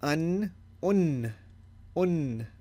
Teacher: the prolongation of the noon for two seconds not just one sec usually we don't